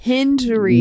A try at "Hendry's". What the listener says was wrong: Not Henry, Hendry.